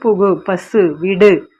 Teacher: தனி குறில் எழுத்தை அடுத்து வரும் வல்லின உகரங்கள் ஒரு மாத்திரை அளவு தான் ஒலிக்கும் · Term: முற்றிய லுகரம்